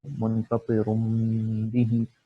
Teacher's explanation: ہم لوگ پہلے نون کو میم میں بدلتے ہیں، اور ہم کو اس کے ساتھ غنہ کی جو آواز ہوتی ہے وہ بھی نکالنی ہوتی ہے. تو طرح کہ یہاں پہ ہے منفطر بھی، تو ہم لوگ اس کو میم پڑھیں گے، اور اس کو ہم لوگ 1 سیکنڈ تک جو میم کی آواز ہے تھوڑی سی کھینچیں گے اس کو منفطر بھی، اور یہ اقلاب کا حکم ہے.